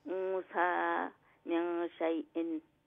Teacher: Noon sakin, then sa appear is hide the noon sound, light nasal sound